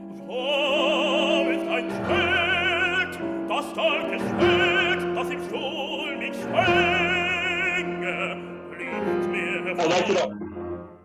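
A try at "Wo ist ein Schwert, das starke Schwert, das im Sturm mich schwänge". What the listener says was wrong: I liked it all except the first note. Wo. It sounds maybe too close. It just sounds like there's something that's not breaking free with it.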